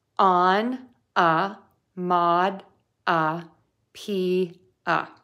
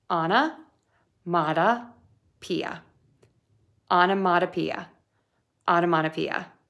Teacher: Lots of a syllables. Make sure you make those very short with a very relaxed mouth, and that will make the word sound a little quicker. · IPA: /ɑn ə mɔd ə pi ə/